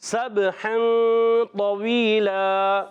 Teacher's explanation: سین کو با سے ملانا ہے، با میں قلقلہ ہوگا.